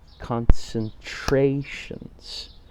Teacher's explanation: So 4 syllables, and the third syllable, the color vowel syllable, is the stress syllable.